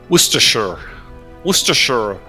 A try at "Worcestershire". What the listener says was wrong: You're missing a syllable. I'm positive you're missing a syllable.